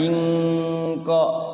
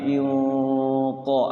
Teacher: Kalau ingqo jadinya kaf itu tapi inqo agak ke belakang qof itu ya hurufnya qadir.